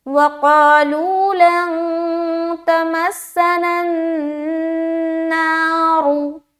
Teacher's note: را کو پیش کے حرکت کے ساتھ پڑھیں گے موٹا کرتے ہوئے